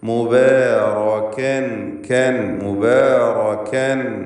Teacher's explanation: ഫത്ഹ് നൽകപ്പെട്ട സന്ദർഭമാണ്. മുബാറകൻ ഐനമാ കാഫ് ഇസ്തിഫാലിൻ്റെ അക്ഷരം തർക്കീഖാണ്.